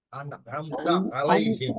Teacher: আইনের উচ্চারণটা কিন্তু আপনার ইয়ে থেকে আনতে হবে, গলার মাঝখান থেকে।